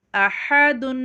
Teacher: ح کی آواز نکالیے گا حلق کو دبا کے